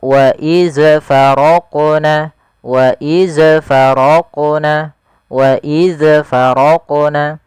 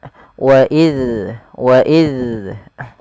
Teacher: Agar sempurna daripada makhraj dan sifat huruf zal, yaitu ujung lidah kita tempelkan dengan gigi seri atas yang 2 di depan itu, yang seperti kelinci, kita tempelkan.